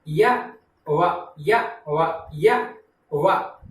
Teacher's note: जिस प्रकार से स्वरों का उच्चारण वायु की अबाध गति से होता है, उसी प्रकार से य और व का उच्चारण जब हम करते हैं तो कोई भी वागेंद्री परस्पर स्पर्श नहीं करती, कोई भी मुखावयव परस्पर स्पर्श नहीं करता। हाँ, जिह्वा उठती है किंतु स्पर्श कहीं नहीं होता है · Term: अर्ध स्वर